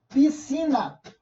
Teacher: Em piscina, o SC tem o som só do S.